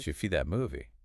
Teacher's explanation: So if I ask, did you see that movie? In rapid speech, the D of did and the Y of you fuse into a J sound, and it becomes, Did you see that movie?